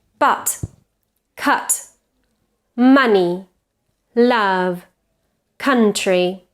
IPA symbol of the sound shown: ʌ